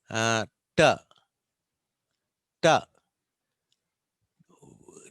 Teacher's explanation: నాలుక మన పంటిని తాకుతుంది. పంటిని తాకి మనము ట అనే సౌండ్ ప్రొనౌన్స్ చేస్తాం.